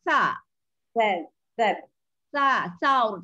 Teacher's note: huruf sa mesti jaga bunyi dia mesti sa, tak boleh jadi so, tak boleh baca so